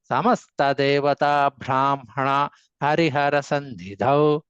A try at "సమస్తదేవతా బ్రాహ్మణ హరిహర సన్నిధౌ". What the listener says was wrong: ఒత్తు చెప్పలేదు, ఒత్తు లేదు సారు. సమస్తదేవతా బ్రాహ్మణ తేలిగ్గా చెప్పడమే.